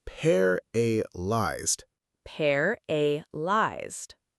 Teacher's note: The stress is on the first part.